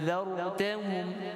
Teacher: huruf zal pada zartahum, seperti biasa makhraj di hujung lidah, bawah gigi, hadapan.